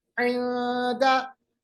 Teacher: जुबान को नीचे रखिए, आवाज को बीच में से निकालिए, थोड़ी सी आवाज नाक में रखिए, बाकी मुंह में ही रखिए। आयादा। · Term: इख्फा